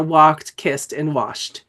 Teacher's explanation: where the suffix takes the voicing quality of the preceding sound